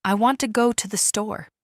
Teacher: In this sentence, want and store are stressed, and the other words are said quickly and softly. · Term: Sentence stress